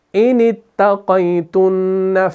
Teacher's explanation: اس نون کو اس تا مشدد کے ساتھ ملا کر پڑھ رہے ہیں، اور یہ حمزۃ الوصل ڈراپ ہو جاتا ہے وصل کی صورت میں